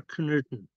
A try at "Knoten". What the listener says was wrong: Knoten, there's no umlaut here.